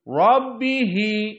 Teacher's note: Maka ra dalam keadaan tafkhim. Karena dia dalam keadaan fathah.